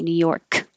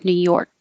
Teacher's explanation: you don't have to release the K. New York. Just hold it there.